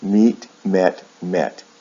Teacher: ends with the T sound instead of a D sound